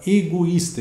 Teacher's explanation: O I é tônico, faz hiato com a vogal anterior e vem seguido de S.